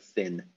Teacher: Yeah, interdental fricative, like th, like in the English word thin.